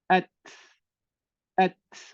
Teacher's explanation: huruf ta ni dia akan keluar bunyi hamas dia bila dia sukun